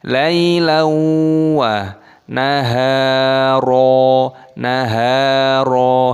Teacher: Lailau, ya sukun dibaca lailawa, fathah tanwin bertemu dengan wawu idgham bi ghunnah. Lailawa, naharo, naharo, haknya dibaca panjang, ada tanda alifnya mad tabi'i 2 ketukan, dan ro-nya di sini dibaca panjang.